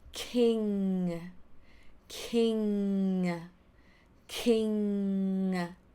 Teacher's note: sound [Music] so in order to make the sound of basically the sound start from the soft palate inside of your throat squeezing together so not anywhere from your mouth from your tongue from your ceiling or your roof no but it's inside at